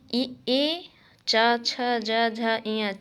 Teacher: ई, चा, छ, जा, झा, इया चा वर्ग और या और सा तालु से बोले जाते हैं